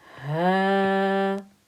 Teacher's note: This was a 2-count stretch. Ha with a fatha and an alif.